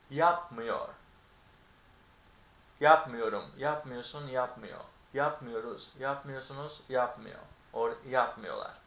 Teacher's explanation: So, when something is in negative, you stress the syllable that is before the negative indicator. Here the negative indicator is the M, right?